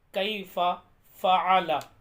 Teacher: یہ جو عین میں نکال رہا ہوں یہ حلق سے نکلے گا